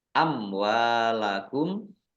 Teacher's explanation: maka menjadi mad wajib muttasil harus dibaca panjang lima harakat amwalakum mim sukun bertemu dengan huruf wau bacaan izhar syafawi dibaca jelas